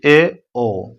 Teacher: जिन स्वरों के उच्चारण में मुख द्वार आधा बंद हो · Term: अर्ध समवृत